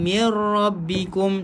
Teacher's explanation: Nun kosong jumpa dengan ra. Idgham bila gunnah. Masukkan dekat ra tanpa dengung.